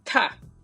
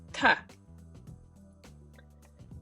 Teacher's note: This for digut is between D and T, but then this is exactly T. Strong T as in top. So we are blowing out air.